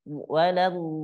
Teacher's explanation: Oke, nanti huruf dotnya Ibu, huruf dotnya dipanjangkan dulu 6 harokat. Huruf dot itu ada sifat istitolah namanya, suara yang memanjang.